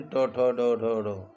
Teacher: इन सबों का उच्चारण स्थान मूर्धा है, मूर्धा से बोला जाता है